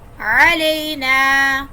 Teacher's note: آئین حلق کے درمیان والے حصے سے ادا ہوگا. علینا، الف مدہ ہے.